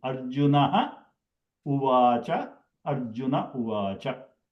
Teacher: the Visarga is elided. Elided means it is not pronounced, or we generally call it as Visarga is dropped. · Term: Elision of Visarga